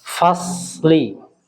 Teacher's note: Ada sedikit koreksi pada apa namanya, huruf shad ya, huruf shad. Jadi huruf shad itu usahakan dia ada sofirnya Pak, suara sofir.